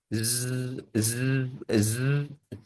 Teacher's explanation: यह आपको लगेगा कि आपके जो वोकल कार्ड्स हैं यह वाइब्रेट कर रहे हैं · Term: वॉइस साउंड